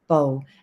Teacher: Bo is your sixth low tone